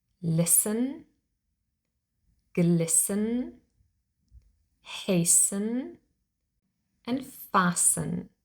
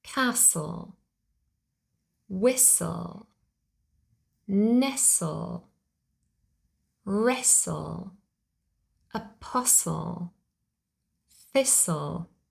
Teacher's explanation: we always spell the letter t but we never pronounce the T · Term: silent T